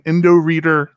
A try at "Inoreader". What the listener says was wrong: Yeah, you're throwing a random D in there.